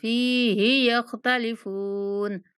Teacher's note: فا کو کھینچنا ہے اور ہا کو نہیں کھینچنا